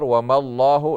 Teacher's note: لفظ اللہ کا لام موٹا پڑا جائے گا جیسے اس سے پہلے میم کے اوپر زبر ہے